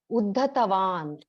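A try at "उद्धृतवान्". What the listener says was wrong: Uddhritavan. There is a swara there. Uddhritavan. Uddhr, that hook. Uddhritavan, released, raised, yeah.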